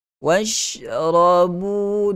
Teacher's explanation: ra berbaris di atas mesti dibaca dengan ra tafkhim, kena baca dengan ra tebal. Washrabu dua harakat mad asli.